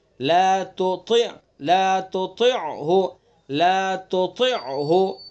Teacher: تا اور طا مخرج دونوں کا ایک ہے لیکن دونوں کے اندر فرق کرنا ہے صفات کے ذریعے سے کہ طا کو پر پڑھیں گے اور تا کو باریک پڑھیں گے